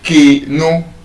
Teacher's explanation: you observe your pitch goes up in that first syllable, K, no. And so your stress is already wrong, and your pronunciation is also wrong.